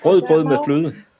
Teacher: it feels like you have to talk in the back of your throat